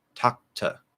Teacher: What happens when we have two T's between words like that? We tend to stop the first one, pronounce the second one. Talkta. That ed ending is still there in that stop T.